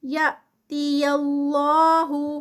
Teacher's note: اللہ کے نام سے پہلے یہ زبر آ رہی ہے تو یہ اللہ کا نام ہیوی پڑھا جائے گا